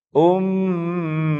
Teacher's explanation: Mim yang ditasydid inilah yang perlu kita tahan, dan ini bacaan gunnah.